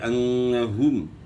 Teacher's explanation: پیش کو مجہول نہیں پڑھنا، پیش کو معروف ادا کرنا ہے. پیش اور واو میں ہون جو ہے گول ہوں گے. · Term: پیش معروف